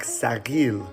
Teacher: in Persian there is no th sound and so we pronounce this as an s.